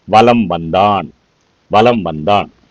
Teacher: எழுத்து வந்ததுனா மகர எழுத்துக்கு பக்கத்துல மகரம் வா என்ற எழுத்து வந்துச்சுன்னா இந்த மகர மெய்யானது தனக்குரிய அரை மாத்திரை அளவிலிருந்து குறைந்து கால் மாத்திரை அளவு ஒலிக்கும் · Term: மகர குறுக்கம்